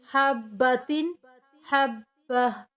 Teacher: جب ہم رکتے ہیں یا وقف کرتے ہیں تو گولتا کو ہاں میں کنورٹ کر کے ادا کیا جاتا ہے